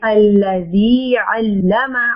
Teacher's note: मीम को लंबा नहीं करना और जाल को सॉफ्टली अदा करें। अल्लज़ी अल्लमा, अल्लमानी अल्लमा, क्योंकि मीम के ऊपर जस्ट ज़बर है जी।